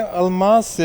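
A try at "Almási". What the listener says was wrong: Almashi. Yes. Yes, we pronounce the S as a sh, like in sheep.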